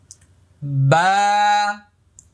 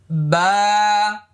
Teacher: বা এক আলিফ পরিমাণ লম্বা হবে। মুখটা খালি ফাঁকা হবে।